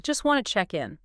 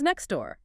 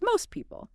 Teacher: in American English, if a T sound comes at the end of a word or sometimes in the middle, especially before another consonant or just in fast speech, it often gets totally dropped